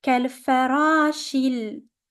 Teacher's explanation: Ra is longer because of the alif.